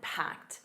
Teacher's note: And notice that packed a soft t at the end.